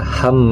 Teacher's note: karena ada mim yang tasdid yang bacanya didengungkan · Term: gunnah musyaddadah